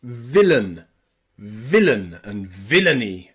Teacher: villain and villainy both have that schwa sound for the A and the I